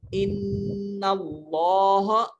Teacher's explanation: ان اللہ، نون مشدد ہے، غنہ کریں گے، ان اللہ، اور ایک اور بات ذہن میں رکھیے کہ جب اس میں جلالت یعنی لفظ اللہ سے پہلے زبر یا پیش آ جائے، زبر یا پیش آ جائے اس میں جلالت سے پہلے، تو کلمہ اللہ کی جو لام ہے اس کو موٹا کر کے منہ بھر کر پڑھتے ہیں